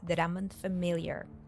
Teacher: she links all three words together